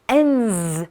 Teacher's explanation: letter D in end is voiced, so we say ends with a Z sound.